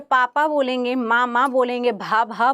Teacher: आपके जो ओठ हैं ऊपर नीचे के, वो एक दूसरे को क्या कर रहे हैं? एक दूसरे को स्पर्श कर रहे हैं। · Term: ओष्ठ्य व्यंजन